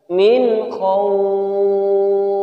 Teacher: Cara bacanya jelas, nunnya jelas terdengar. Min khawf. Tidak boleh dibaca dengung. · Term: izhar halqi